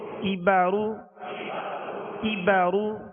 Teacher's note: کاف کو باریک پڑھنا ہے، یہ ڈنڈی والا کاف ہے، اور را کو پر پڑھنا ہے، را پر پیش ہے